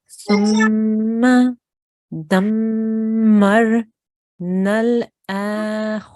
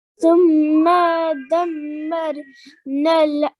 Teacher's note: we need to make sure we're making a nasal sound here on our mim gunna